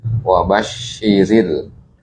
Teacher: rnya di sini dibaca tarqiq atau tipisnya.